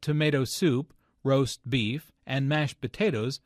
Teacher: tomato soup roast beef and mashed potatoes are compound words the stress falls on the second word in each phrase